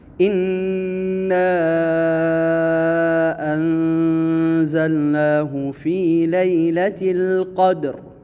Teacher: اِنَّا یہاں پر جو مد ہے، مد جائز منفصل ہے، اس کو لمبا کرنا ہے، اور انزلنا نون پہ اخفا ہوگا، یہاں پر غنہ کریں گے۔